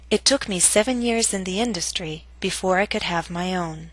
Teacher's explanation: your voice must reach a lower note on own compared to industry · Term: falling intonation